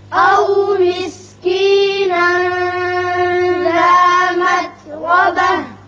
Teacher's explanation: او مسکینا یہاں اخفا ہوگا، ذا متربہ را پر ہوگا. وقف اس لیے کیا کہ یہاں وقف مطلق ہے، وقف کرنا بہتر ہے ملانے کی بجائے.